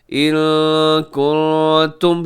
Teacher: یہاں نون ساکن ہے اور نون ساکن کے بعد کاف ہے، تو یہاں بھی اخفا کیجیے گا